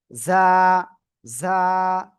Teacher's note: ঝিঝি পোকার ন্যায় আপনার আওয়াজটা হবে